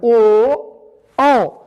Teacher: ओ औ इन दोनों का उच्चारण है कंठ और ओठ, कंठ और ओठ से मिलाकर के इनको बोला जाता है